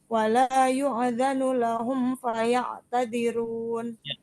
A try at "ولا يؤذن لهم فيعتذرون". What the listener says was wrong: Wala yu di situ hamzah yang sukun bukan ain. Wala yu.